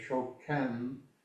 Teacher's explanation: The E is pronounced flatter than the I.